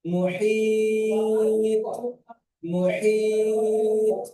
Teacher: তটি কলকলা হরফ, তাই একে কলকলা করে ডান দিকের হরফের সঙ্গে মিলিয়ে পড়তে হয়